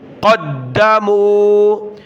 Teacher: دال کو سخت کیا تشدید کی وجہ سے